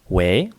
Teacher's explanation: It starts low and ends high, also called the ascending tone. It sounds a lot like how you would make an inquisitive intonation in English. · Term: second tone